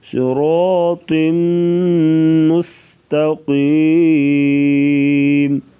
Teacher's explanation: صاد اور را کو پر پڑھیں گے، تو کو بھی پر پڑھا جائے گا